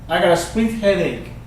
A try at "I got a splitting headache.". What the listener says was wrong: I got a splitting headache. I got a splitting headache.